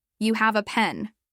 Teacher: If they say it flat, with no question intonation